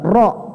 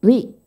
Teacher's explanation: Kalau ri itu lebih ke arah tipis, seperti senyum.